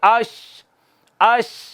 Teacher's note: زبان کا درمیانی حصہ اوپر تالو کے ساتھ لگتا ہے، صرف آواز نکلنے کی ہوا کی تھوڑی جگہ باقی رہ جاتی ہے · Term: شین